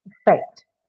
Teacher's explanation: the second syllable is stressed here for two reasons, but the most important reason is that the first sound is a schwa sound, hence it cannot take a stress on itself.